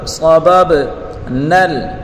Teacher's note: انا صببنا، صاد کو پر پڑھیں گے، اور با کو با کے ساتھ ملا کر پڑھیں گے، با حروف قلقلہ ہے، تو حرف کو ادا کرتے وقت اس کی مخرج سے تھوڑا ہلا کر پڑھیں گے با کو۔ صبب نل، نون کو لام کے ساتھ ملا کر پڑھیں گے۔